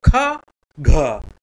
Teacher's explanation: ज्यादा वायु निष्कासित होती है, तो दूसरा और चौथा वर्ण होता है महाप्राण